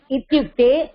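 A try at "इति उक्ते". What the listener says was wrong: But it is not ityukte. It is iti.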